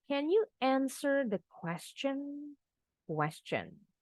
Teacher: Bukan question, tapi question. Huruf T-nya bunyinya CH.